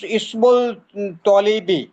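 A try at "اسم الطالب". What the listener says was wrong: যে লামটা উচ্চারণ হবে না এখানে, তাহলে মিম ধরবে কাকে? তকে। ইসমুত তলিবি। ইসমুত তলিবি।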